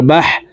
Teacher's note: হা হরফকে হলকের মধ্যখান থেকে উচ্চারণ করব, কারণ হার মখরাজ হলকের মধ্যখান থেকে হবে।